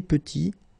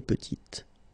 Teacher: Final T is not pronounced, and then when you add this E at the end, you get the sound T